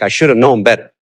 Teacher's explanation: The have is often contracted to V, which sounds like of, like I should have known better, but it's still have.